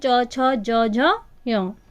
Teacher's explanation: च वर्ग जो हमारा है उसका उच्चारण स्थान तालु है।